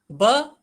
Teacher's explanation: यह संस्कृत में ओष्ठ या अल्प प्राण घोष व्यंजन है।